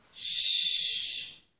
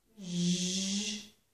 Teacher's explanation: This one is zh as in zhur, measure. The first one is voiceless, so no vibration. The second one is voiced.